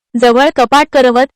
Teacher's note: मराठी शब्दातील शेवटचा अ निवृत अर्धवट उच्चारला जातो म्हणजेच अ हा पूर्णपणे उच्चारला जात नाही